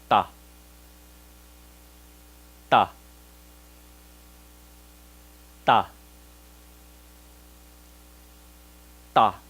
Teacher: In Vietnamese, the tip of the tongue touching the alveolar ridge. In this graph, that means it's from number 4 to number 5. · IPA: /t/